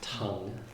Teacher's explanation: So, we just put a Roman T there, but we aspirate it.